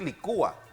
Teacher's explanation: últimamente es más frecuente acentuarla y separar entonces ese diptongo con el acento, y también es válida esta forma.